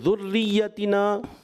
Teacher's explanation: یہاں را کو آپ نے پر نہیں کرنا, باریک رکھنا ہے